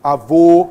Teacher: Então, é um timbre fechado que o circunflexo vai mostrar para a gente